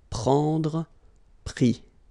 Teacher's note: you don't pronounce the S, so you get I